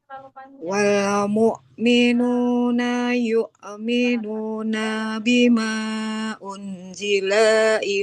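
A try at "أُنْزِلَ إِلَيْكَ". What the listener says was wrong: Lamnya nggak panjang. Nah, di setiap huruf akhir dalam suatu katanya, Ibu, ya, jangan dipanjangkan. Tidak unzila bima unzila ilaik.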